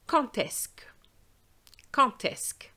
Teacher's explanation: With quand, you don't usually make a liaison except when you say quand est-ce que. And what's going to happen is that the D will change to a T sound